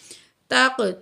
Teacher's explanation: قاف کو موٹا بھی کریں گے، کلکلا بھی کریں گے